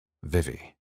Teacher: His two front teeth pressed into the center of his lower lip to start the V sound. Then they had to bounce and catch quickly to let the sound burst forth, much like she'd just burst through the waters.